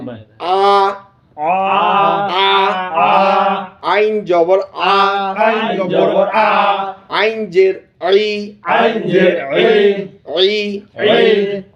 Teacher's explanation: আওয়াজ থাকবে মধ্যম আর বাতাস থাকবে বন্ধ